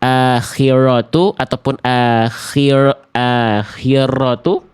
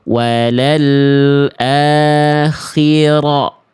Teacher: Getarannya ada tapi enggak berlebihan tapi tidak hilang. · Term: Takrir